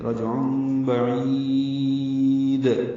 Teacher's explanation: عین وسط حلق سے ادا ہوگا، تنوین کے بعد با آنے کی وجہ سے اقلاب ہے. رجع بعید، عین وسط حلق سے ادا ہوگا، عین کو لمبا کریں گے، دال ساکن وقفاً اس پہ قلقلہ کر دیں گے